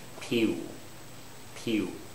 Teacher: a Chinese speaker would often say a W type sound